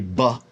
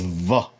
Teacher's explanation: in biblical Hebrew, there was a hard B, buh, and then there was a soft B, which is v, like the V, the letter V.